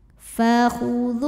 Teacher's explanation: Di sini hurufnya adalah huruf waw. Maka mim sukun kita bunyikan dengan jelas ya. Bunyi M-nya jelas, idhar. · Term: idhar syafawi